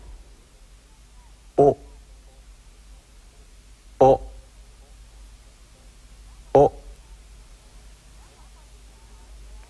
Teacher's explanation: the final Japanese vowel o is also sharp and short in duration be very very careful not to stretch it into the diphthong all keep it short and clipped now try it oh oh